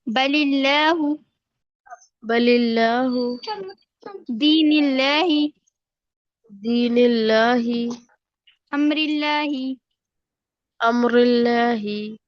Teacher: लफ्ज अल्लाह के लाम को बारीक पढ़ेंगे